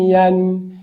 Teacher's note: یا فتحتین ین، یا ګورئ یا دا زمونږ د ژبې منځ بالمقابل تالو سره لګي په ډیره اسانۍ